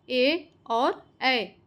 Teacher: ए और ऐ इनका उच्चारण स्थान कंठ और तालु है।